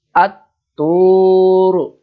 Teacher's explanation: jadi lam tidak terbaca tersembunyi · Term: alif lam samsiah